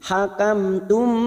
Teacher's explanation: mim sukun bertemu ta Idhar syafawi mim sukun dibaca jelas tanpa mendengung